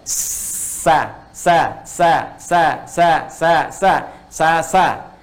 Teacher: ke bawah Kalau yang tadi mendekat mau nempel ini ke bawah jadi ketika dia bunyinya ke bawah tidak muncul seperti O lagi tapi Netral · kalau Sin istifal itu yang pangkal lidah tadi dia justru ke bawah ya bukan mendekati tapi menjauhi ke bawah